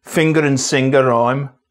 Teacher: In Birmingham, finger and singer rhyme and fang also still has its /g/.